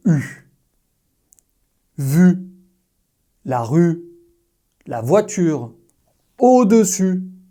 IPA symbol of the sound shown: y